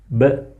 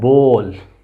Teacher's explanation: Again bilabial sound. Two lips meet together. B. As in the word bowl.